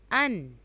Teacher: ہم اس کو سمپل پڑھیں گے ان، نوز میں ساؤنڈ نہیں جائے گا، ان، عین زبر میم عم، انعم، یعنی کہ عم نہیں ہوگا، سمپل انعم، تا زبر تا، انعمت۔